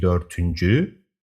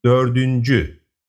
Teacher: When the suffix is added, the hard t turns into a soft d. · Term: consonant softening